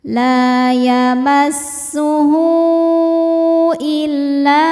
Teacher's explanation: La yamassuh [bernyanyi] hu mad silah thwilah karena ada ha damir diapit dua huruf hidup dan setelahnya adalah hamzah maka ha damirnya panjang boleh empat boleh lima harakat · Maka hal dhamirnya panjang, boleh 4 boleh 5 harokat. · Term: mad silah tawilah